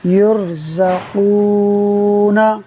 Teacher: را ساکن ہے، را ساکن سے پہلے پیش ہے، را کو پر پڑھیں گے۔